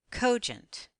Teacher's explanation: most words with two syllables will accent on the first syllable let's blend the two syllables together accenting the first syllable